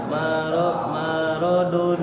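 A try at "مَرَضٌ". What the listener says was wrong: Jangan terburu-buru. Itu terburu-buru tapi apa ya? Apa namanya kalau Umi itu sistemnya temponya cepat tapi tidak terburu-buru.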